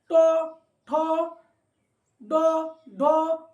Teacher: যখন আমরা ট বর্গের উচ্চারণ করব তখন আমাদের জিহ্বার অগ্রভাগ অর্থাৎ আগেরটা একটু উল্টে গিয়ে মূর্ধাতে স্পর্শ করবে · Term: মূর্ধন্য বর্ণ